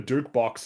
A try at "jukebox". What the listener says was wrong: I thought it was a juke box. Is it not a juke box? You said duke, as in the noble title.